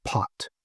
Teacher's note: Um, if you have a P at the very beginning of a word, like uh say the word uh pot, okay, it's accompanied by this puff of air that you can feel when you know pot, you put your hand in front of your mouth, you can feel a nice strong puff of air when you say a word like pot. But when you put an S in front of that to get the word spot, that puff of air all but disappears.